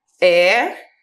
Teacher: Por terem a sílaba tônica, a sílaba mais forte na antepenúltima sílaba, são chamadas de proparoxítonas.